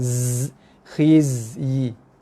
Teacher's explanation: Sama gang dengan sod, dia ada bunyi desiran, tapi desiran zai ni paling kasar. Bunyi macam bunyi lebah.